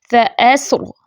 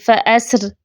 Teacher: وقف کی صورت میں آپ اس کو فَأَسْر موٹا بھی پڑھ سکتی ہیں را ساکن، اور باریک بھی فَأَسْر، ٹھیک ہے، فَأَسْر باریک بھی پڑھ سکتی ہیں۔